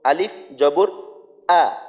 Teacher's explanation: আলিফ জবর আ, হলকের শুরু থেকে হবে